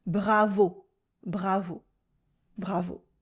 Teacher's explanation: Like all French words though, the accent is on the final sound.